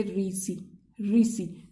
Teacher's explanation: जब हमारी जीभ ऊपर पलट के ऊपर टकराती है तो वो होते हैं मूर्धन्य। जैसे अब बोलो री से रीसी, रीसी, तो जीभ पलटकर ऊपर जाकर लगती है तो वो मूर्धन्य होते हैं।